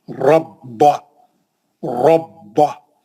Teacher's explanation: बा पे भी सख्ती है क्योंकि तजदीद है, 2 बा है, एक साकिन एक बा पे जबर है।